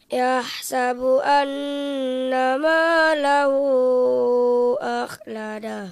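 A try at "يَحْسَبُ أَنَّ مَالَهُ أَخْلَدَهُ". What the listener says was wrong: Nanti diperbaiki pada huruf ba-nya. Huruf ba-nya itu adalah bibir atas bertemu dengan bibir bawah. Bibir kita itu ada yang basah, ada yang kering. Ini bagian yang basah atau sering kita sebut dengan bibir lautan. Ba. Nah, yahsabu anna ma lahu akhlada.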